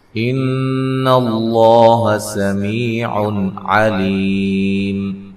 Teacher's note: ان اللہ سمیع علیم، نون مشدد پہ غنہ ضروری ہے۔ لفظ اللہ کے لام کو موٹا ادا کرنا ہے، اس سے پہلے حرف پر زبر ہے۔ سمی، سین کو باریک سیٹی سے می یا مدہ ہے۔